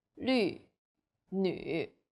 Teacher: The U sound is like the French U. Your lips should be round and pouting.